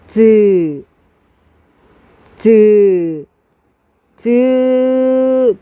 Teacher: 처음에 막습니다 그리고 터뜨리면서 공기의 마찰이 일으킵니다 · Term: 파찰음